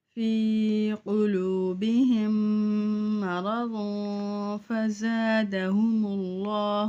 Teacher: یہاں پہ میم مشدد ہے، یہاں پہ غنہ کریں گے، میم ساکن کے بعد میم مشدد ہے